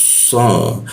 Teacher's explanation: huruf sh lidahnya dilengkungkan ya sehingga udaranya agak terhambat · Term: huruf so